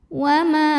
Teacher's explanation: Wa ma di sini ada hukum tajwid namanya mad tabi'i dhahiri. Karena ada alif yang didahului baris fathah, maka cara bacanya dipanjangkan 2 harokat.